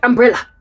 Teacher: That thing at the end of umbrella is, it's called the schwa. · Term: schwa sound